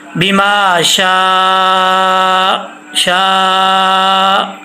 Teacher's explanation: میم کے آگے الف لمبا کریں گے، اور یہاں پہ مد ہے، 2.5 الف کی مقدار اس کی ہے ، ٹھیک ہے، تو اس کو لمبا کر لیں گے، بما